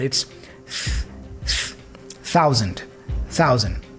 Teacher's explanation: the th here for thousand has a voiceless sound